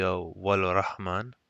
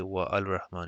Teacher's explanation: the hamza is not pronounced, so it's continuous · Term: hamzatul wasl